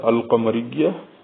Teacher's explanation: the letter qaf of this word is being pronounced only once and al is being pronounced completely. That is because qaf is a lunar letter.